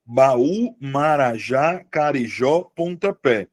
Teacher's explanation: Carijó tem a sílaba tônica no final, Marajá também tem a sílaba tônica no final